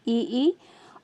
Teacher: सिर्फ तलवे से उच्चारित होने वाला जो स्वर है वो है आपका ई, और तालु और कंठ से जो उच्चारित होने वाला है वो है आपका ए। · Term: तालव्य, तालव्य स्वर